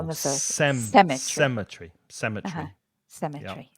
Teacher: tree semet tree there you are sem tree SE the stress the stress is on the first syllable